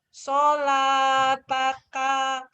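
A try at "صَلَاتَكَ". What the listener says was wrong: Pendek. Sholataka. Sholataka.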